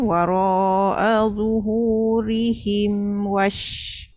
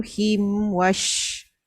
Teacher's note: untuk yang izhar tu mim mati jumpa dengan waw tu pastikan katup dulu sebab dia huruf mim dengan waw dia kan satu mahraj kan. Dia memang automatik tau apabila mim mati jumpa waw dengan mim mati jumpa fa, bibir kita ni dia tercepat untuk pergi ke mahraj yang huruf yang seterusnya.